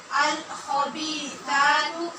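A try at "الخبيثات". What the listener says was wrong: خبی نہیں پڑھنا، خوبی پڑھنا، خو۔ الخبیثات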